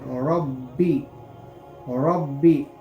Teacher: را کے اوپر زبر ہے تو اس لیے ہم را کو پٹ پڑھیں گے، یعنی موٹا کر کے پڑھیں گے